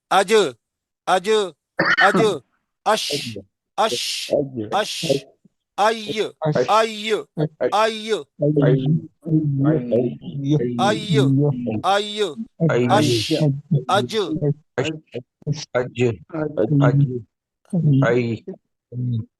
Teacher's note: وسط لسان، زبان کا درمیانی حصہ. یعنی یہ جو حرف نکلتے ہیں جب بالمقابل اوپر کے تالو سے لگے، اس سے جیم شین یا ادا ہوتے ہیں